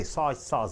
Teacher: 2 nouns are there. Stressing on soy.